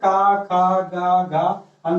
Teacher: का वर्ग में आपके का खा गा घा अंगा ये सभी आते हैं, ये कंठ से बोले जाते हैं